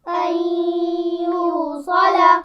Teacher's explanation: نون ساکن کے بعد یا آ گیا ہے تو ہم یہاں پر غنہ بھی کریں گے اور ملا کر بھی پڑھیں گے